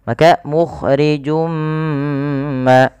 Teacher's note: bi gunnah artinya kita memasukkan suaranya kepada rongga hidung kita. Maka mukhrijum ma sambil ditahan. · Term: idgham bi gunnah